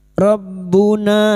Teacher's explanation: na fathah diuti alif dua harakat kita panjangkan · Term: mad thai